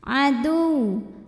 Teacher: Maka ini bukan idgham bi gunnah. Jadi waw tasydid ini dibaca dengan naber. Jadi kita agak naikkan intonasi kita, tidak perlu ditahan.